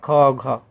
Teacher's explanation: प्रत्येक वर्ग का दूसरा और चौथा वर्ण महाप्राण होता है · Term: महाप्राण व्यंजन